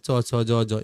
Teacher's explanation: তালব্য ধ্বনি, ওই যে যেগুলো তালু দিয়ে উচ্চারিত হয়